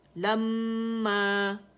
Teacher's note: لما جو دونوں ہونٹوں کے خشک حصے ہیں نا اس میں کیونکہ میم مشدد ہے, ہر غنہ مشدد آ رہا ہے تو پہلا ساکن ہے اور دوسرا زبر کے ساتھ ہے, تو آپ دیکھ رہے ہیں اس میں جو الف کبیرہ ہے الف ممدودہ میم کی آواز کو کھینچ رہی ہے 2 کاؤنٹ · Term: مد طبیعی